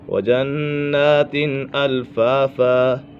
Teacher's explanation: نون مشدد ہے، نون مشدد میں ہمیشہ غنہ ہوتا ہے۔